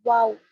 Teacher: दोनों होठों के सिर्फ किनारे मिलने से निकलता है